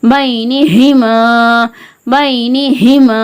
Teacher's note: மீம் அலிஃப் ஜபர் மா, பைனிஹிமா. அலிஃப் ஜபர் அலிஃபே மத்தா, ஒரு அலிஃப்க்கு நிகரா நீட்டி ஓதுறோம்